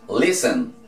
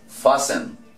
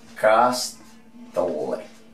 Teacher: En este caso, la T después de la S es totalmente muda. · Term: la T es muda